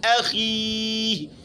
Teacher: خا کے نیچے زیر ہے تو یہ ہوگا تو موٹا لیکن زیادہ موٹا نہیں ہوگا